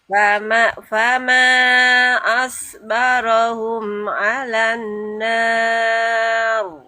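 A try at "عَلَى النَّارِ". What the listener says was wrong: Ditahan lagi dengunya. Alan nar.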